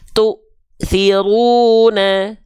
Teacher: Tu-nya terhentak karena berjumpa dengan hamzah sukun